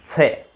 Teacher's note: ये होता है दंत्य से, इसका उच्चारण होता है दांतों से। जीभ का अग्रभाग पहले दांतों के लगाइए, फिर उसका उच्चारण कीजिए से, फिर वो अंतर आ जाएगा।